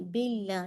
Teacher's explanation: باللہ لام موٹا نہیں ہونا چاہیے